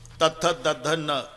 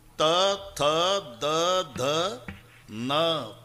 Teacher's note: किती ताकद लावून धक्का मारते जीभ आतून दाताला.